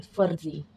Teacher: lower lip में upper lip का folding हो रहा है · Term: लेबिडेंटल